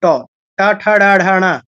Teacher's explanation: ট বর্গ হচ্ছে মূর্ধন্য বর্ণ অর্থাৎ ট বর্গের প্রত্যেকটা বর্ণের উচ্চারণ হয় মূর্ধাতে